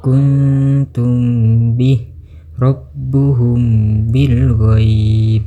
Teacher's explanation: If syafawi menurut istilah adalah membunyikan bacaan dengan samar-samar di antara dua bibir dan dibaca dengung. Hukum bacaan apabila mim sukun bertemu dengan huruf ba. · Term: ikfa syafawi